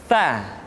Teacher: ujung lidah disentuhkan dengan dinding dua gigi seri bagian atas